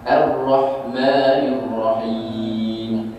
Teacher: bila kita sebut ra kan, ni ra ni hujung lidah dia kena langit-langit sikit kan, ra. Jadi bila kita sebut ra tu, yang kita melencong dia melencong tu dia pergi ke depan sikit, ra kan, ra ra ra kan. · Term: huruf ra